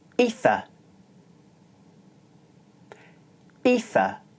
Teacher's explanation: the first syllable is high and the second syllable is low.